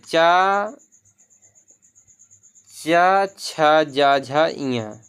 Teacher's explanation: तालु से ये निकलता है ये व्यंजन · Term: तालव्य वर्ण